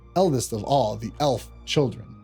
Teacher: the stress is on the first syllable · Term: trochaic tetrameter